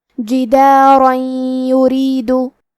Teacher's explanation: را کے نیچے زیر ہے تو یہاں را کا حکم ہے ترقیق، ہمیں حرف را کو پتلی آواز میں پڑھنا ہے